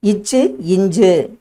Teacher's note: நாவின் இடை மேல்வாயின் இடைப்பகுதியை பொருந்துவதால் பிறக்கும் எழுத்துக்கள் இச்சு இஞ்சு என்பதாகும்.